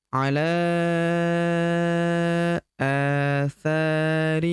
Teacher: Ala huruf la kita panjangkan 5 harokat karena di atasnya terdapat tanda garis bacaan panjang 5 harokat.